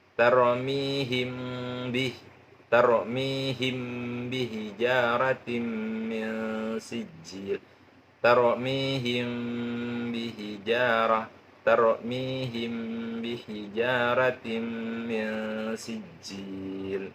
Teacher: suaranya itu suara mim matinya seperti berdengung, tetapi dengungnya tidak sempurna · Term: ikhfa syafawi